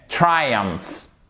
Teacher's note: Accent tonique sur la première syllabe